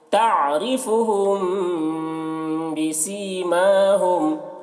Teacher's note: ہم، یہاں پر میم ساکن کے بعد با ہے، میم ساکن کے بعد با ہے تو میم، تو یہاں پر غنہ کے ساتھ میں پڑھیں گے۔ یہاں پر میم ساکن کے بعد با ہے تو اس کو غنہ اور اخفا کے ساتھ پڑھیں گے